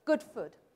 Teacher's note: If you come up to Scotland, where I live, people rhyme good and food, okay? Good food.